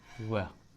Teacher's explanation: दांत और ओठ से बोले जाते हैं, दांत और ओठ के मुख से बोले जाते हैं ना, दंतोष्ठ, दंतोष्ठ, दंतोष्ठ।